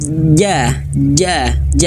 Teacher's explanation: idza ja Nah Bapak Ibu bisa dirasakan di tengah lidah ya Tengah lidah kita menyentuh ee langit-langit ja ja ja nah huruf Jim sama seperti makhrajnya Huruf ya